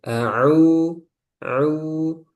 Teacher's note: Nah, au sempurnakan ke u ya.